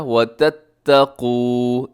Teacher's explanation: اس میں قاف موٹا رکھیے گا، تھوڑا کھینچیے گا کیونکہ واو مدہ ہے